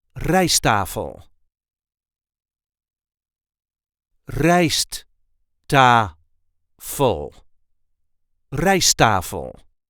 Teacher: you do hear only one T. We don't really pronounce both T's. · The emphasis in RIJST-TAFEL is on the first syllable